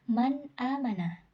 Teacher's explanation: dia harus langsung dibaca, tidak boleh ditahan dan didengungkan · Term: idhar